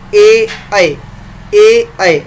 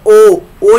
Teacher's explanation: ऐसा स्वर जो कंठ और तालव्य दोनों के स्पर्श करने से दोनों के संयोग से उच्चारित हो रहा है जिसका उच्चारण हो रहा है। तो देखिए ए ऐ जब आप करते हैं तो तालु के जीवा स्पर्श करती है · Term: कंठ तालव्य स्वर